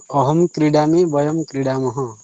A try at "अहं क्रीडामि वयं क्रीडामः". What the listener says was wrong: उत्तमं शोभनमस्ति।